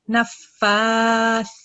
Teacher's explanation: Nafa. And then because there is a vertical fatha on top of it, you're supposed to prolong the sound for 2 seconds